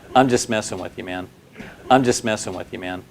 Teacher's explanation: The words I and messing receive more stress than the other words.